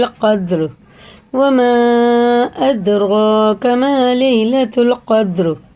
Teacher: دونوں دال میں قلقلہ ہے